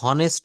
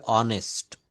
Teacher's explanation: এই এইচ এর উচ্চারণটা এখানে হ না হয়ে অ এর মতো হবে।